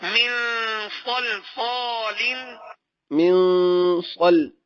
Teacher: صاد جو ہے یہ بھی حروف اخفاء میں سے اور غنہ ہو رہا ہے